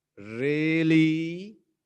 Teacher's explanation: ऊपर से टोन को नीचे ला रहा हूं और फिर ऊपर कर रहा हूं